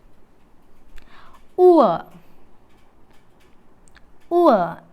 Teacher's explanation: The lips ആർ അൺറൗണ്ടഡ് for the first element ഉവ, കണ്ടോ, ആൻഡ് അൺറൗണ്ടഡ് for the second element. Thus the diphthong is described as a glide from back rounded vowel just above back half closed position to central unrounded vowel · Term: diphthong oor